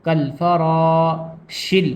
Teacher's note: کالفراشی میں را کو تھوڑا پر کر کے پڑھیں گے، کالفراشل، بڑا شین ہے، کالفراشل، شین کو لام میں ملائیں گے کیونکہ لام کے اوپر ساکن بنا ہوا ہے.